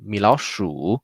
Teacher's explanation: Sounds like a tone 4 and quickly tone 2, just two curves together.